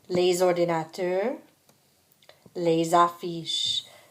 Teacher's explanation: Les garçons, les filles, les ordinateurs, les affiches. So again, because we have these words starting with a vowel, we hear the S's of the les as Z's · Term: liaison